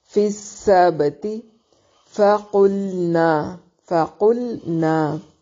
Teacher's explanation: لام اور نون دونوں کو واضح کر کے پڑھنا ہے اور قاف کو موٹا پڑھیں گے. فقلنا نا الف مدہ ہے.